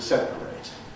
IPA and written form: ˈsepəreɪt (separate)